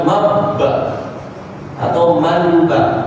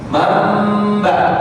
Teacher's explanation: Nunnya langsung masuk huruf mim. Antara nun dan ba langsung berbunyi huruf mim. Mamba itu tadi, bukan mabba atau manba. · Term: iqlab